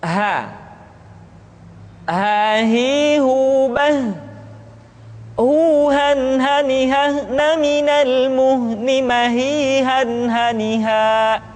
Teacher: huruf ha dikeluarkan dari tenggorokan yang terjauh, sama seperti kita mengucapkan huruf a.